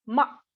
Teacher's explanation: And with a falling pitch, ma, come.